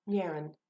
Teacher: the n will dominate the sound of the vowel